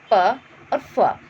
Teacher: इन वर्णों को बोलने में हमारी स्वर तंत्रियाँ कंपित नहीं होती है। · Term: अघोष व्यंजन